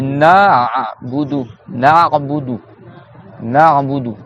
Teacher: Donc le Rain il sort du milieu de la gorge. Na'budu. On doit resserrer ici.